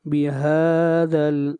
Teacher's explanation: ہا کو کھینچ کر پڑھیں گے 1 الف کے برابر، مد اصلی ہے